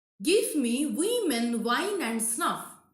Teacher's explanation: a single stressed syllable at the end of trochee line, that is catalectic